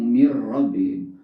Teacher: Rabbihim adalah idgham bila guna ya, ketemu ra masuk tapi tidak dengung